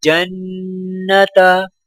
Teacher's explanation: یہاں پر نون مشدد ہے تو لہٰذا نون پر غنہ کیا جائے گا